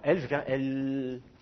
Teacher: Un allongement. Donc, je vais allonger, par exemple, le L, je vais le prononcer plus longtemps. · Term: allongement de la consonne